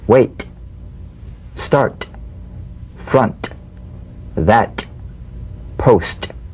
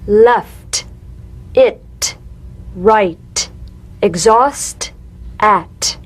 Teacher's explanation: The unvoiced T, tongue front palatal stop consonant, cognate to the D. The same staccato springing action as the D drum beat, with no voice, forms the light tap of the T.